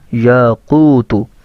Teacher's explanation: باریک کاف کے ساتھ نہیں موٹے کاف کے ساتھ اس کو پڑھنا ہے